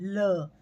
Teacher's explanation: ल पार्श्विक है, यानी जब हम ल का उच्चारण करते हैं तब हमारी हवा जो है वो जीभ के दोनों तरफ से निकलती है